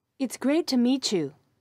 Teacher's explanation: listen to the way the t and y sounds combine to make a ch sound